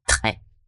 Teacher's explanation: O som do R é sempre aqui da garganta